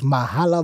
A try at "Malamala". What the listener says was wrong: It's Malamala. Yeah, in Tsonga, the H is silent.